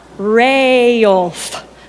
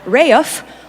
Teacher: somehow Middle English pronunciations managed to drop the L